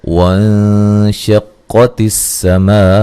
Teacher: نون ساکن کا یہاں باریک اخفا ہو رہا ہے، قاف کو موٹا ادا کریں گے، سین کو باریک سیٹی سے ادا کریں گے، میم پہ جو مد ہے یہ مد واجب ہے، یو وولین ہے، مئذیوں ذال کو نرم ادا کرنا، نون تنوین کا ادغام مع الغنہ ہے، وا الف مدہ ہے، ہیہ وقفاً گولتا کو ہائے ساکنہ میں تبدیل کر دیں گے۔